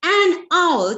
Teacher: Here, H in the word R is silent, thus having a vowel sound in the beginning.